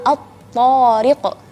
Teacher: gerakan bibirnya tidak bergerak ketika melafalkan huruf to, dan juga suara huruf to sangat kencang karena memiliki dua sifat yang kuat atau semua sifatnya kuat.